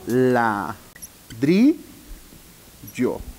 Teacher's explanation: ladrillo es una palabra grave porque su sílaba tónica se encuentra en la penúltima